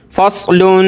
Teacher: صاد موٹا کر کے اور سیٹی کی آواز